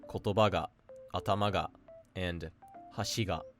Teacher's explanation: They're essentially flat, but the difference is that at the end of the word, if there's a particle, the particle is going to attach low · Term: odaka